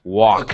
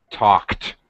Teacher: Yes, it has a T, and you should be able to hear the T clearly at the end.